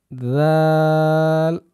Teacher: দা এটা একটু পাতলা করে বলার চেষ্টা করবেন যেন জাল না হয়ে যায়